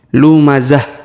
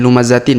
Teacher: huruf Ta marbutah di ujung yang tanwin ini Tin kita sukunkan sehingga kita rubah menjadi ha sukun